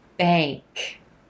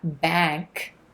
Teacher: you'll see the as in black symbol before the ink but what you're gonna hear is more of an a as in gray sound